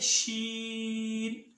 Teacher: اس کے بعد ہے شین، وسط زبان اور بالمقابل اوپر کا تالو۔ شین ادا ہوتا ہے وسط زبان اور بالمقابل اوپر کا تالو